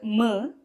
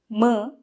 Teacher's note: Nasika is the nose, so we need to use the nose also while producing these sounds. So while saying m, we use the lip as well as the nose. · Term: labial sound